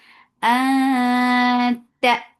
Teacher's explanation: You are hiding the sound of noon. You are going towards makhraj of ta and you are keeping the sound in your nose. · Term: ikhfa